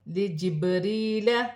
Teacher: با ساکن ہے، حروف قلقلہ میں سے ہے، قلقلے کے ساتھ ادا کیا جائے گا، جیسے لجبریل، یا ساکن سے پہلے زیر ہے، یا مدہ بن رہی ہے، ایک الف کی مقدار کھینچ کر پڑھا جائے گا۔